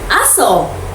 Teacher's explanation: Mas mahaba ang pagbigkas dahil maaring tinatawag ang aso o nagpapakita ng matinding emosyon. Hindi man nagbago ang salita, ang haba ng pagbigkas ay natutulong upang may pahayag ang damdamin o intensyon ng nagsasalita.